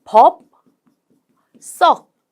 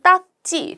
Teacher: 물론 발음은 법 썩 된 소리로 발음이 나죠